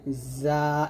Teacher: যা উচ্চারণ করতে হবে জিহ্বার আগা সামনে নিচে দুই দাঁতের মাঝে লাগিয়ে